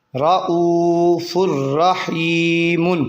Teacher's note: ان دونوں لفظوں پہ ادغام کا قاعدہ جاری ہو رہا ہے، کیونکہ رؤوف الرحیم میں فا دو پیش فن ہے، اس کے بعد را آ گیا یرملون میں سے، اس لیے ادغام کا قاعدہ۔ اس پہ را آ گیا لیکن را پہ گنہ نہیں ہوگا تنوین کے بعد